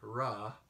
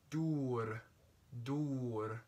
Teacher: the R which is a tapped R which is in a rolled like Spanish or a Germanic or